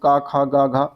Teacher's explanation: क वर्ग की बात करेंगे तो क वर्ग कंठ वर्ण में आता है। बिल्कुल क ख ग घ इस तरीके से कंठ में आता है क्योंकि पहला है तो इसलिए अघोष हो जाएगा और ख और क की बात करेंगे तो पहला है तो इसलिए अल्पप्राण भी होगा तो ये भी सही है।